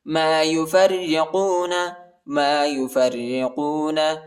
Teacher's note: را پر جو ہے شد آیا ہے اور را کو جو ہے باریک پڑھیں گے، را پر زیر آیا ہے